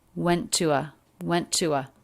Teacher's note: we have two t's here they're connected with just a single true t sound so you don't need to make two t's here we link them together went to a went to a went